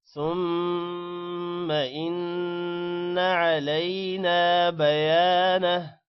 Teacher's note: ثم ما کو لمبا نہیں کرنا غنہ کرنا ہے. ان نون پر بھی غنہ ہے لمبا نہیں کرنا.